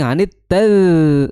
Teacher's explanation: makhrajnya adalah di ujung lidah bertemu dengan ujung gigi seri atas ya, atau sedikit ke keluar ya ujung lidahnya, disertai dengan mengalirnya suara. Jangan sampai tertahan suaranya.